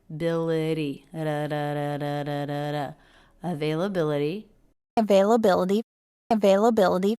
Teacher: notice that the t is a flap T here